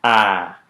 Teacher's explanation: made with the oral cavity open and the tongue toward the front